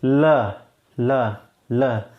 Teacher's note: जीभ आ के एकदम सीधी पड़ जा रही है दांतों पे, और जीभ के दोनों किनारों से हवा निकल रही है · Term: पार्श्विक व्यंजन